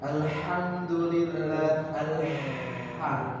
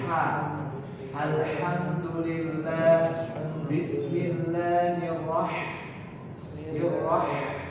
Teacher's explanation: Kalau ha, yaitu ha di sini agak bergerak ke depan sedikit. Alhamdulillah, ha, dahulukan halusnya, akhirnya.